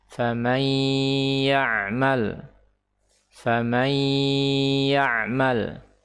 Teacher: jadi tidak ada lagi huruf nun tetapi yang ada adalah huruf ya yang disertai dengan gunah dua harakat · nun sakinah idgham ke ya fathah dengan gunnah 2 harakat. Famayya, ain sakinah famayya, ma ya'ma, lam sakinah ya'mal, famayya'mal, famayya'mal.